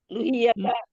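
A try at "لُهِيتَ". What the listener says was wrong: ইয়াতা না, ইয়ার উপরে শকুন আপা, আপা ইয়ার উপরে শকুন, শকুন জজম আছে ইয়ার উপরে, সেই জন্য হিটা টানবে, হাই ইয়াজের হি।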